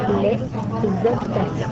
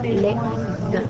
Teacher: La majorité des H en début des mots s'appellent H muets, car ceux-ci n'ont aucun effet sur la prononciation. Il est possible d'effectuer une liaison avec le H muet, puisqu'il n'existe pas en tant que véritable consonne.